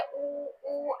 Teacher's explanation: जब हम इनको उच्चारित करेंगे तो हमारा जो होठों का आकार है वो कैसा हो जाएगा? गोल हो जाएगा।